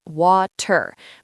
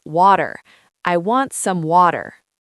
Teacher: the 't' sound in the middle of words often changes. It becomes a soft 'd' sound.